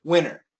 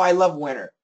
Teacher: Can we cancel the T yes winter it's possible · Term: no T